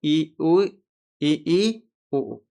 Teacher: मुख द्वार के संकुचित होने पर जो स्वर निकलेंगे उन्हें कहेंगे संवृत। ह्रस्व इ दीर्घ ई उ दीर्घ ऊ। · और इसके अलावा अगर हम देखते हैं संवृत जैसे, तो क्या होता है संवृत? मुख द्वार के संकुचित होने पर जो स्वर निकलेंगे उन्हें कहेंगे संवृत